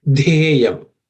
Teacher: letter in the third varga or third class of consonants, which has to be aspirated